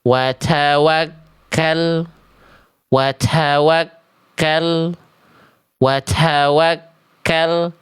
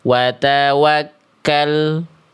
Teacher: Huruf ta-nya salah karena dibaca huruf ta-nya terlalu berlebihan nafasnya.